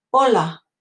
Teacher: H is silent start of a word in Spanish